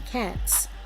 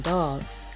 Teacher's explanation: sounds associated with the S are voiceless and all phones associated with the Z are voiced